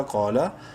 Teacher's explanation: منہ بھر کے پڑھتے ہوئے الف برابر لمبا کریں گے